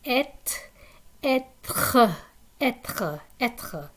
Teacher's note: Hey, R in English is like but the French R is more like gargling something in your throat